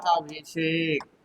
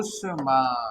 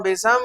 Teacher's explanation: दंत सा के स्थान पर मूर्धन्य सा हो जाती है।